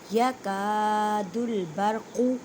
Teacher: یکاد البرق قوف, یہ قوف کو ادا کرتے وقت خیال رکھیں کہ کاف کی آواز نہ آئے کیونکہ یہ قوف حروف مستعلیہ یعنی موٹے حروف میں سے ہے, اور قوف کو بالکل نہیں کھینچنا کیونکہ اس کے پر حرکت ہے.